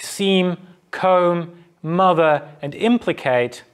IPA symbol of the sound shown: m